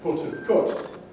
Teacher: in Northern English, popular Northern English, they do rhyme. The precise quality may vary, so you can get put and cut, or you can get a more elegant put and cut.